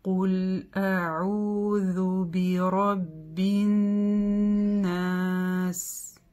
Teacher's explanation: Итак, у нас здесь удвоение, и заметьте, удвоение нун требует большей длины, чем удвоение любых других букв, да, так как мы здесь протягиваем назализацию.